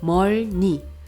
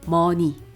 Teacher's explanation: 멀니 is awkward to pronounce. Then 받침 리을 falls. It remains 머니.